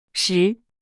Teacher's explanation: Second tone rising starts medium and rises to high.